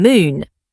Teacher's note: Letter M said M, as in moon. Same as Turkish M, lips closed, sound hums through the nose.